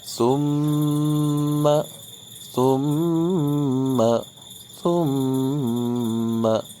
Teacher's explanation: Ini adalah gunnah huruf mim, mesti ditahan 2 harokat.